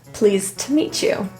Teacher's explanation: The to in this phrase reduces to a quick t.